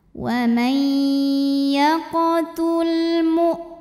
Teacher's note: Huruf lam sukun dibunyikan dengan jelas, namanya izhar mutlak ya.